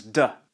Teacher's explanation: this is a voiced Dental stop